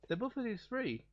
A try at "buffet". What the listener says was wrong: Are you saying buffet? You know the T is silent, right? It's buffet.